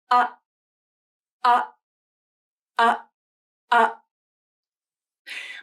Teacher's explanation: my vocal cords came together to stop the airflow and the voicing stopped too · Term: glottal stop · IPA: /ʔ/